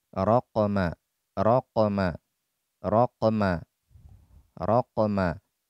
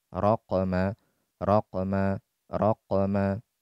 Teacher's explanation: Maka suara qalqalah ini benar-benar murni suara perpisahan dari dua anggota yang membentuk makhraj tadi. Kalau pada qaf, saat berpisah pangkal lidah dari langit-langit di bagian yang lunak, muncullah secara alami suara qalqalah.